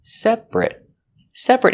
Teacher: the stress is on the first syllable only, and that syllable, ate, is not stressed